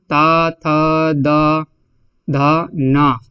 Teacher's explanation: त थ द ध न और आपका ला और सा ये सब जो है कहां से उच्चारित होते हैं दंत से होते हैं